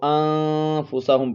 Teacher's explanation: یہاں پر اخفا ہوگا، آواز کو ناک میں چھپا کر پڑھیں گے، نون ساکن کے بعد حروف اخفا میں سے فا ہے، تو اس کو انفسہم پڑھیں گے۔